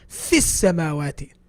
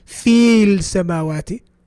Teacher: We're jumping the ya, which is the med in fi. We're jumping the lam as well in al-samawati. We're jumping those two letters and we're jumping to the scene that has a shadda.